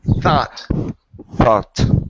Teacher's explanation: give me a good TH here instead of saying thought with an F.